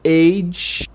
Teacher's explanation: o som de e no começo também assim como oito mas no final tem o chiado